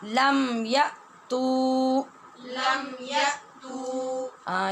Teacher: یا کے بعد حمزہ ہے، وہاں جھٹکے سے آواز سختی سے بند ہو جائے گی